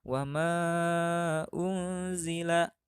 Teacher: Ikhfa yaitu apabila nun sukun atau tanwin berhadapan dengan salah satu dari huruf ta, sa, ja, da, za, za, sa, sya, so, do, to, zo, fa, ko, ka. Maka nun sukun atau tanwin tadi dibaca samar.